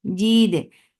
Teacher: Jid for kasra give E sound attached with dal. Dal will get sifa of qalqala and dal is light.